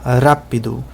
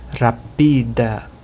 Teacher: Então aqui é a última sílaba aqui, a penúltima sílaba é o pi e a antepenúltima é o ra. Em português, a sílaba acentuada é o ra, rápido. Mas em Esperanto é o pi, rapida.